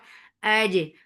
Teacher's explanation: Fatha upon jaws attached with jim. Jim will get sifa of qalqala.